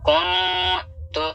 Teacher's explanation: یہاں پہ نون ساکن کا اخفا ہوگا کیونکہ نون ساکن کے بعد تا ہے اور تا حروف اخفا میں سے ہے